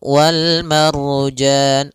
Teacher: Yaitu alif lam yang ditulis dan dibaca. Alif lam alif lam qamariyah itu lamnya dibaca dengan jelas suara lamnya.